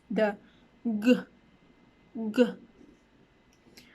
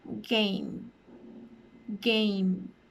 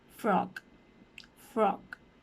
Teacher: the place of articulation of the G sound would be a velar sound because the back of your tongue is touching the back of your mouth, which is the velum.